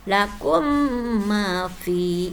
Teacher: dibacanya harus didengungkan sebab mim mati bertemu dengan mim